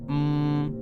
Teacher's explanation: you'll notice how the sound will come out of your nose instead of your mouth